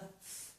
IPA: θ